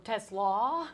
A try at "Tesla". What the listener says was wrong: It's the emphasis on not Tesla like the car, but the second syllable, Tesla.